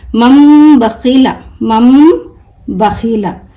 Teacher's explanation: نون کو میم سے بدل کر غنہ اور اخفا کے ساتھ پڑھا جائے گا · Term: اقلاب